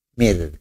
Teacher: Kena ra sebelum ra mati ada huruf berbaris bawah. Makanya dinipiskan.